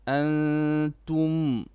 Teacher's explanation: here we have a rule here on antum. It's called ikhfa. You do two haraka of gunna.